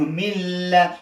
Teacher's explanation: مطلب دا چې دغه حرف په حرف کې ننباسمه، خو چون لام د خیشوم مخرج یعنی پوزه نه دی، غنه نه دی، نو دې کې غنه نه کومه، ولی ادغام کومه. دا د شد مې ورکړو، نو حرف په حرف کې ننباسمه، نو مل، خو غنه نه کومه، ادغام کومه، ولی غنه یعنی پوزه کې نه وایم.